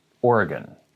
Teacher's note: you pronounce this is you don't say oregon you say organ there's a little bit of an uh after or and then the gone is not gone it's gun so oregon but the uh is very very very slight organ